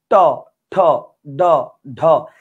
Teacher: জিহ্বার আগাটা দাঁতের উপরের পাটির দাঁতের পেছন ভাগে পেছন ভাগে লাগতেছে